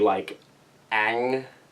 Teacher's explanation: You would have to have this ah sound with an NG after it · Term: NG sound